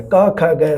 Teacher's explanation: ਜਿਨ੍ਹਾਂ ਵਿਅੰਜਨਾਂ ਨੂੰ ਬੋਲਣ ਸਮੇਂ ਜੀਭ ਦਾ ਪਿਛਲਾ ਪਾਸਾ ਕੋਮਲ ਤਾਲੂ ਨੂੰ ਟੱਚ ਕਰਦਾ ਹੈ ਤਾਂ ਉਸ ਨੂੰ ਸਪਰਸ਼ ਕਰਕੇ ਸਾਹ ਦੀ ਹਵਾ ਨੂੰ ਰੋਕੇ। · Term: ਕੰਠੀ ਧੁਨੀਆਂ